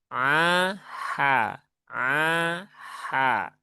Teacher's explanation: Huruf ain yang mana huruf ain ada di tengahtengah tenggorokan.